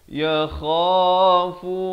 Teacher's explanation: ya kha di hujung kerongkong, fu 2 harakat masing-masing, kha dan fu.